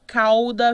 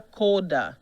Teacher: Já o ditongo au, no próprio latim, ele tende a o. Então, o que era au vira o.